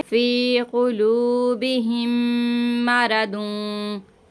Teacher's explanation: मीम साकिन के बाद जब दूसरी मीम आती है तो हम यहाँ पे गुन्ना करके पढ़ते हैं